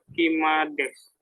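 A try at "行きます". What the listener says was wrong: ikimas. Untuk kalau di belakang sudah ada bentuk mas, jadi tidak usah ada tambahan des.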